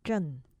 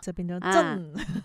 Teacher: 阵字呢，它是翘舌音，而且呢是前鼻音